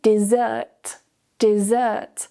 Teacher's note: The stress is now on the second syllable. And notice the change in vowels.